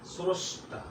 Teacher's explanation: শব্দের প্রথমে রফলা থাকলে অকারের উচ্চারণ ও এর মতো হয়।